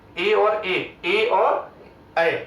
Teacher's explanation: कंठ और तालु से मिलके बने पहले ए और ऐ